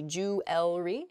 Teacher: we miss that that second e sound in there